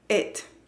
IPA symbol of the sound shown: ɪ